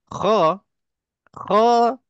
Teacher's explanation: tempat keluarnya di hujung halquum hujung halquum bahagian atas hampir dengan pangkal lidah ini lidah ini halquum maknanya di hujung halquum di sini okey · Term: huruf Kha